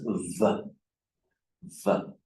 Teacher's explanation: we have the lower lip against the upper teeth